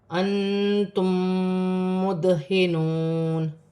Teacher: یہ ادغام مال غنہ کا قاعدہ ہے، میم کے قاعدوں میں سے ہے کہ میم ساکن کے بعد جب بھی میم مشدد آئے گی تو یہاں میم ساکن میں غنہ کیا جائے گا · نون ساکن میں اخفا ہوگا کیونکہ تا حرف اخفا میں سے ہے